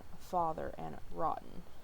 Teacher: a low back unrounded tense vowel, and it makes the ah sound, like in father and rotten. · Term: script A